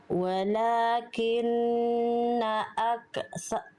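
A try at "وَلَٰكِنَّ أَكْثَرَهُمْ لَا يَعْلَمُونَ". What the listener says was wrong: Jangan dibunyiin tenggorokan bunda. Relaxin, jangan dikasih bunyi tenggorokannya. Fokus di makhraj kafnya. Percikan nafas itu keluar dari makhrajnya, bukan dari tenggorokan.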